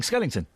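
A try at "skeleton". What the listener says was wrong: It's not Skellington. It's Skell-E-ton. Well, it sounds like you're saying Skellington. It sounds like Skellington.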